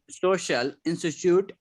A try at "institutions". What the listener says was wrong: Institutions, not institutes. Institutions.